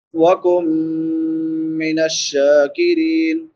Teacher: نون ساکن کے بعد حروف یرملون میں سے میم ہے تو ادغام مع الغنہ ہوگا